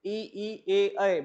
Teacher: अ वर्तुल स्वर यानी कि जहां पे होठ चपटे हो जाते हैं